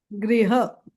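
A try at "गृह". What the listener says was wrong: Not griha. Actually this ra is rolls on top of the roof of the mouth. Like how we say like that. Gruha.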